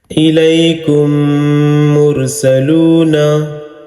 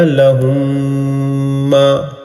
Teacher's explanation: میم ساکن کے بعد میم آئے تو میم کو میم سے ملا کر گنہ کے ساتھ پڑھا جائے گا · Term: ادغام شفوی